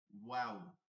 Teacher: এই দুই ঠোঁট গোল করে ওয়াও